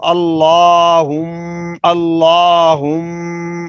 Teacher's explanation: میم پر شد ہے یا غنہ ہوگا، اور غنے کی مقدار ایک الف کے برابر کھینچ کر پڑھنا ہوتا ہے